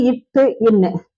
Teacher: நாவோடைய நுனி வந்து அன்னத்தோடைய நுனியை பொருந்துவதால் பிறக்கின்றது